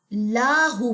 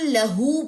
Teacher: آیت نمبر 4 میں اکثر اسٹوڈنٹ جو ہے ایک مسٹیک کر دیتے ہیں کہ وَلَمْ يَكُنْ لَهُ کو لاہو پڑھ دیتے ہیں, یعنی کہ لام کی زبر کو لمبا کر دیتے ہیں